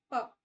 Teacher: इसमें हमारे दोनों होठ एक साथ जुड़ेंगे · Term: बाय लेबियल